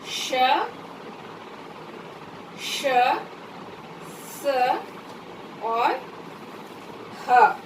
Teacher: इनके उच्चारण करने में घर्षण से एक गर्मी निकलती है, इसलिए इसे हम कहते हैं ऊष्म व्यंजन।